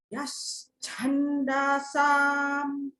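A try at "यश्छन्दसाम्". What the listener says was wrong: So at the moment, you're giving a long, you're saying Chanda. That you see that the da is a short one. So you got to go Yash Chandasam. You don't get a holiday until the Sam.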